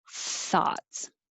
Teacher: But it sounds like a T, tots. That means your tongue is behind your teeth when it should be further forward. And you need airflow.